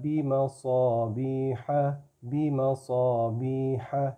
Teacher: میں صاد کو پھر جو ہے وہ موٹا کر رہا ہوں